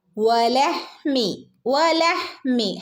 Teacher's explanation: വവിനെ ചുണ്ട circle ചെയ്തിട്ട് ഒട്ടത്തിൽ ആക്കിയിട്ട് വേണം വ എന്ന് ഉച്ചരിക്കാൻ